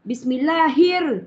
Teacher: Kata alif lam syamsiyah, bunyi lam tenggelam.